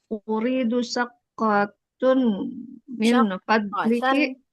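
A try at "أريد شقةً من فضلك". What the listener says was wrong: Syaqqatan. Syaqqatan. Fathatain ya Ummu.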